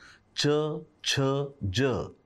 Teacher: च छ ज हे पसरट जीभ आणि टाळू यांच्यामधून उच्चारले जातात